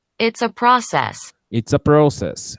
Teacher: No verbo, a sílaba tônica é says. E no substantivo, a sílaba tônica é pro.